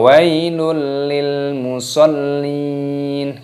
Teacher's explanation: tanwin bertemu dengan huruf lam ini hukumnya dibaca idgham bilagunnah idgam artinya masukkan bilagunnah tanpa berdengung